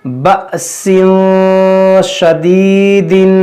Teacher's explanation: یہ حمزہ ساکنہ کو جھٹکا دے کر پڑھا جاتا ہے